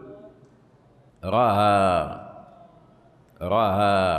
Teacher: يجعلون الهمزه مخففه بين الهمزه والالف · يجعلون الهمزة مخففة بين الهمزة والألف وبين الهمزة والواو وبين الهمزة والياء، نحو رأى تقول، كيف تقول بينها وبين الفتحة، يعني ستقول رأى واضح ولا لا؟ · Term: همزه بين بين, همزة بين بين